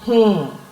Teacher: this is having a nasal sound, not complete N sound but nasal sound.